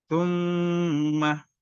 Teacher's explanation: mim sukun bertemu, mim bertasdid. Ini disebut gunnah musyaddadah. Dibaca 3 harokat.